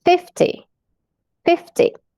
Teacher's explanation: quando a gente entra nos números, nas dezenas, a primeira sílaba é a tônica